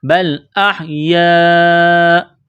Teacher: یا الف مد زبر یا، یہ لمبی مد ہے، 4 الف کے برابر کھینچنا ہے